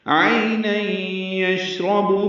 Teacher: عین وسط حلق سے ادا کریں گے